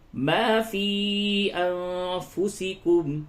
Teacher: نون ساکن کے بعد فا ہے, یہاں پہ اخفا ہوگا